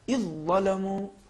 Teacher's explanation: مثال کے طور پر دیکھیے اذ ظلموا, ہم ادغام کریں گے اور اس طریقے سے پڑھیں گے اذ ظلموا, ہم حرف ذال کا تلفظ نہیں کریں گے